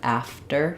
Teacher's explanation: that t is um not really it's pretty much unaspirated because it comes after the f